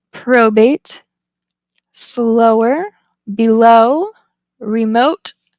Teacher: the tongue is high mid and back the lips are rounded and it is a tense vow the next back vow is